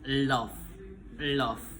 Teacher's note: udara mengalir melalui sisi lidah. voicing voice.